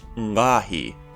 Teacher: this glyph was pronounced ‘ngqaahi’ with a prenasalized uvular stop